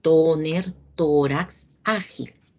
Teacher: la mayor fuerza de voz se ubica en la penúltima sílaba y llevan acento gráfico siempre y cuando terminen en cualquier consonante que no sea N o S o en vocal. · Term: Palabras graves